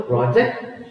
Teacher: when you say project, the stress is on the first syllable